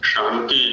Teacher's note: और अभी तो चूंकि बच्चे उच्चारण कर रहे थे ये, और सुनने में आया जैसा कि कहीं कहीं तालव्य के स्थान पर दंत्य का उच्चारण इनका हो रहा था। शांति जो शब्द है इसमें तालव्य षकार है, दंत्य नहीं है।